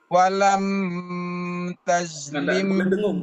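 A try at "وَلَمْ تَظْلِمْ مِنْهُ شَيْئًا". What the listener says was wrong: Tidak boleh dengung.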